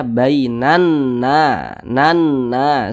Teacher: Nah, tadi sudah kami jelaskan bagaimana cara mudah membaca huruf hijaiyah yang bertasydid. Berarti huruf n-nya nih didobel menjadi 2. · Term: huruf nun bertasydid